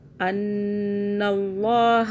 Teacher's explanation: نون مشدد ہم نے 2 سیکنڈ کا غنہ کیا